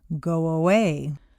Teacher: if a word ends in O, your lips are going to be in the forward position, so a W quite naturally leads into the next vowel sound, go away. You don't want to say go away and break the undercurrent of your voice.